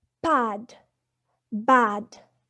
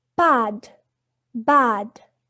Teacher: the oral passage is blocked by closing the lips. And we have established before that P and B are bilabial. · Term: oral stop